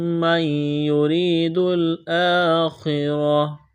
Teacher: را کو باریک کرنا ہے، یا مدہ ہے، کڑا زبر ہے ، خا کو موٹا کرنا ہے، را کو موٹا کرنا ہے،